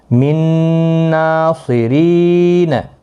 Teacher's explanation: فمن نکث من ناصرین، من ناصرین، تو یہاں پر بھی نون حذف ہو جائے گا، نون نہیں پڑھا جائے گا، ادغام ہوگا، میم اور نون کو آپس میں ملایا جائے گا اور نون کو پھر گنہ کے ساتھ پڑھیں گے